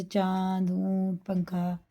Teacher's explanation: تنوین نون ساکن کے بعد اخفا میں سے کوئی حروف آئے تو نون کی آواز کو ناک میں لے جا کر 1 الف کے برابر پڑھنا ہے